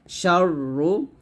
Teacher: শীষ সহ মোটা আওয়াজে শিন উচ্চারণ করতে হবে